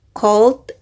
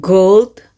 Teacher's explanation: In this pair, cold and gold and back versus bag, the difference is in voicing. K is voiceless and G is voice. Both consonants are velar plosive, meaning they are made with raising the back of the tongue towards the soft palate, but G uses the vocal cords.